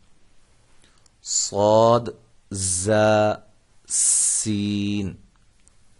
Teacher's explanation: ان تینوں حروف میں سیٹی کی آواز پیدا ہوتی ہے۔